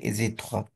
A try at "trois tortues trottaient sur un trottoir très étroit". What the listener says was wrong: Étroit. Pas étroit. Il n'y a pas de E.